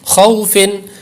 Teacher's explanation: خو واو زبر خو، فا دو زیر فن، خوفن. واو لین ہے اس لیے لمبا نہیں کریں گے